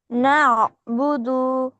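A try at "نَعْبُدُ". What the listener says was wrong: না, হয় নাই, হলকের মধ্যখান হতে। এই যে কণ্ঠের মাঝখানে দুই আঙ্গুল দিয়ে হালকা একটু চাপ রাখো, রেখে বলো না বুদু, না বুদু, না বুদু। দুই আঙ্গুল দিয়ে কণ্ঠের মাঝখানে হালকা একটু চাপ দাও।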